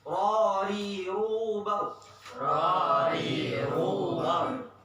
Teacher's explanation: Ro-nya tebel, ru-nya tebel, bau-nya tebel. Ri-nya tipis.